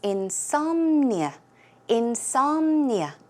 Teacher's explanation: The stress goes on som, so it's insomnia, insomnia.